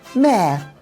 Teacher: Unless the next word starts with a vowel, there's no R sound for me.